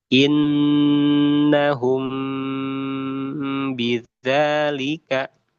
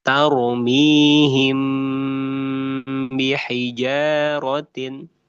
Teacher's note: Ketika kita baca mim sukun bertemu dengan ba ya. Maka bacaannya di samarkan dan didengungkan. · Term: ikhfa syafawi